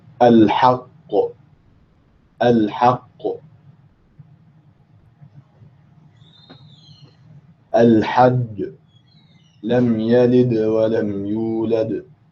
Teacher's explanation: when you pronounce the letter of qalqala without any takalluf, without any excess, you'll find that the resulting sound is somewhat close to the fatha. It's not a fatha.